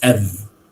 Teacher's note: it in a sentence right we pronounce it as f okay it's not off but it is f right it's weak it's a weak form there